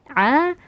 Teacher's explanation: huruf Ain keluar dari tengah tenggorokan juga